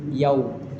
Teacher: Maliki yaumiddin. Yau ini bibirnya harus kita moncongkan, yau dia karena waw itu dia kedua bibir kita bergerak